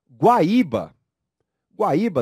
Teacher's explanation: hiato formado pela letra i isolamento e com força na letra i